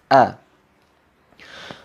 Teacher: Huruf awalnya adalah huruf hamzah, keluar dari pangkal tenggorokan, ya, di atas dada. A tepatnya adalah tempat atau letak dari pita suara kita.